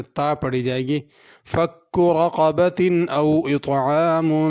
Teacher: اور رقبہ کے اندر را کو بھی پر کرنا ہے اور قاف بھی بڑا ہے، اس کو پر کرنا ہے۔ اگر اس آیت پہ رکیں گے تو رقبہ پڑھیں گے، اگر ملا کے پڑھیں گے تو پھر تا پڑھی جائے گی۔ فک رقبۃ او اطعام، تو فک رقبہ میں دونوں کاف آ گئے ہیں، اس لیے اس کو بہت احتیاط اور خیال سے پڑھنا ضروری ہے۔